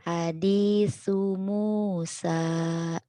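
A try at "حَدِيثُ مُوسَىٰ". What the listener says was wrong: Hadisu. Sunya ujung lidah ya. Sa.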